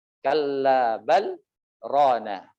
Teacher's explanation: Walaupun lam sukun bertemu dengan ra, ya, tapi di dalam riwayat Hafs ini dibaca dengan izhar beserta saktah